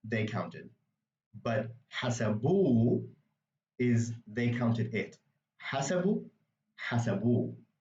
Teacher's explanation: you don't actually hear the H, but it does do something to the word, which is change where the emphasis is placed in the word